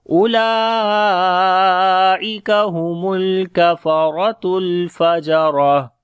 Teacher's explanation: Lam we long due to standing fatha on it, and also there is mad sign, which is mad muttasil, 4 to 5 seconds we long.